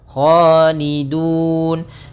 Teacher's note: kha termasuk isti'la agak tebal sedikit